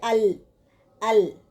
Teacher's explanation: زبان کے کنارے کو اوپر کے سامنے والے 5 دانتوں کے مسوڑوں کے ساتھ لگانے سے نکلتا ہے. جیسے ال، ال.